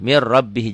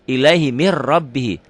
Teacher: Ini nun ketemu ro, tidak pakai dengung, nun ketemu ro. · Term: idgham bila gunnah